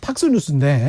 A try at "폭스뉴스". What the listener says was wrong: 폭스뉴스입니다. 발음이 지금 미국식이어서 그런데 저 영국식은 폭스입니다.